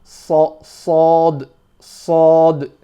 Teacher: This next one, so with sad, sad, sad, you'll notice that your tip of your tongue is touching the back of the bottom teeth, but the middle of the tongue is lifting up and touching the palate above. Sad, sad, and your mouth is full of air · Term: full mouth letter